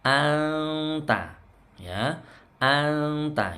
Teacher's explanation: Anta, ini bacaan ikhfa hakiki, hati-hati. Nunnya tidak dibaca nun, anta bukan, tapi nunnya disamarkan, siap-siap ke huruf ta.